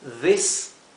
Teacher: esta se pronuncia s más como un silvido como la s española